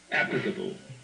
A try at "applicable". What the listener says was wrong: it's the L that you're not playing right. It's the same combination that we just dealt with a minute ago. The P, uh, only in this case not going to a T, but going to an L, going from the lips to the tongue action. Applicable, applicable.